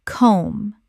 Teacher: The B is completely silent. One syllable only.